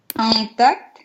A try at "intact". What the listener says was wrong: Опять на А уходишь. Intact. В этом слове, да, intact читается.